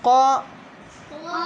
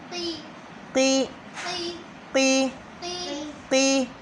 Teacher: ابھی یہ قاف موٹا ہے تو اسے ہم قاف زبر قا موٹا ادا کریں گے، لیکن قاف زیر قی باریک